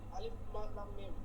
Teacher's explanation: আলিফ হচ্ছে টান নাই, লামে হচ্ছে 4 আলিফ, আর মিমেও 4 আলিফ